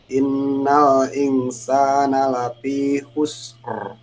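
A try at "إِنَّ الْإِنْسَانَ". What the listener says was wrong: Coba innal insanya kurang ditahan, Pak. Tahan dulu gunnah itu dua-duanya.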